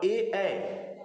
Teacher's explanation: कंठ तालव्य। कंठ तालव्य, क्योंकि कंठ और तालु दोनों से मिलकर बना होता है